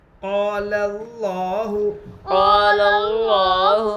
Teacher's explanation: کھڑا زبر برابر ہے الف مدہ کے، اس لیے کھڑا زبر کو ایک الف کے برابر کھینچ کر پڑھیں